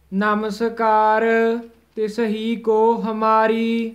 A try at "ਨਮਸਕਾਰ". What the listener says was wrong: ਨਮਸ ਵੱਖਰਾ ਨਹੀਂ ਬੋਲਣਾ, ਕਾਰ ਵੱਖਰਾ ਨਹੀਂ ਬੋਲਣਾ, ਇਕੱਠਾ ਹੀ ਹੈ।